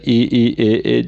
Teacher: अग्र स्वर में आ जाता है ई ए, जिनके उच्चारण में जीभ के अग्रभाग का प्रयोग होता है।